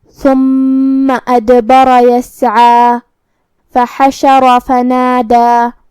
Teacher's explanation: کلمت یسعا میں یہاں حرف العین کو ہم حلق کے درمیان والے حصے سے ادا کریں گے. آخری میں مد طبیعی ہے، تو دو حرف کے برابر اپنی آواز لمبی کریں گے.